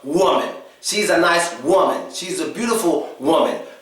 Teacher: Most of the difference is in the first half of the word. When we say woman, we're actually putting stress on the O. And it's kind of like a hard O sound.